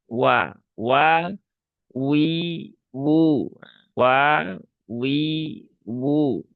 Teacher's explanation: Ngonyong dulu ya. Walaupun fathah ya, walaupun fathah huruf wau dia harus monyong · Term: huruf waw